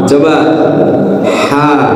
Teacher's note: Ain ini kan mahrojnya dari tenggorokan bagian tengah ya, sama dengan ha.